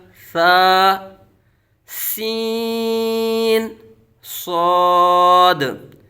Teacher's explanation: सीन हरूफ सफीर में से है सख्ती से सीटी की तरह तेज आवाज निकलेगी